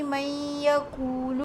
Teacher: In man yaqulu, the Noon Sakin is followed by ja, which is a Yarmooloon letter, so it is a merge with a nasal sound Ghunnah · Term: Idgham